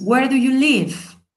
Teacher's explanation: Where es mi question word y la acentuamos, y también el verbo.